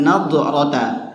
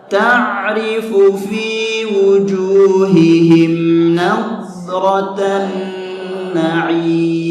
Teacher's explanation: Tapi dhat itu huruf al-istitalah atau sifat hurufnya memiliki sifat huruf yang memanjang. Jadi cara bacanya jadi ada suara memanjangnya. Nah, itu suara memanjang namanya.